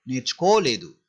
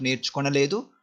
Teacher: If you say నేర్చుకొనలేదు also correct, but while speaking fast we just skip na sound